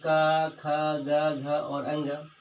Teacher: क ख ग घ अंग ह और विसर्ग का उच्चारण स्थान कंठ होता है